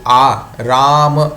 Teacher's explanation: फिर आ, राम, र में जो आ लगा हुआ है वह आ है, तो राम का जो आ है वह भी कंठ से उच्चरित होगा। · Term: दीर्घ आ